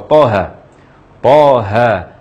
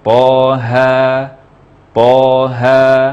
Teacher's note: To dibaca 2 harakat saja tanpa imbuhan hamzah, dan ha dibaca 2 harakat juga tanpa imbuhan hamzah. Jadi jika ada yang baca Toha atau Toha dengan imbuhan hamzah, baik disengaja atau tidak disengaja, harus dibenahi.